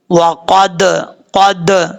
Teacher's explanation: قاف حروف مستعلیہ میں سے ہے، پر پڑھا جائے گا. دال حروف قلقلہ میں سے ہے، اس میں قلقلہ کریں گے